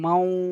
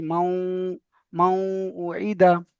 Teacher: এখানে এই যেটা শুধু দেখেন, আজকে যে কায়দাটা, নুনের উপর সাকিন এসেছে, এখানে নুন সাকিন বলে, নুন সাকিনের পরে ঈদগামে ইয়ার মালুনের 6টি অক্ষরের মধ্যে থেকে ওয়াও এসেছে, ঈদগামে নাকিস হবে। নুন সাকিনকে ওয়াওয়ের সাথে মিলিয়ে এক আলিফ পরিমাণ গুণনা করে পড়তে হবে। যেমন মাউ, এই যে মাউ বলে ধরে রাখছি, মাউ, মাউ ও ঈদা।